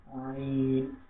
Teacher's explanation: আইন গলা থেকে গভীর আওয়াজ দিয়ে আমাদেরকে আইন করতে হবে